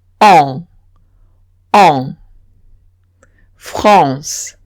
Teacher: Y dicen, cuando veo una AN, no pronuncio la A separada y la N separada, sino que pronuncio AN como un único sonido que es on.